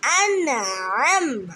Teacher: আইন কণ্ঠনালীর মধ্যখান থেকে উচ্চারিত হবে।